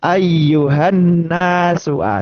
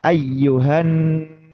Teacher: Membaca huruf nun ketika tasdid itu memang haknya adalah menahan itu lebih lama. Lebih lama dari tasdid yang bukan nun bukan mim. · selain ee suara masuk hidung gitu kan ya, juga bermakna menahan nun tasdid itu pengucapan n itu lebih lama. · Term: ghunah, gunnah